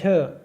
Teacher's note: झ का उच्चारण स्थान भी क्या हो जाएगा हमारा तालु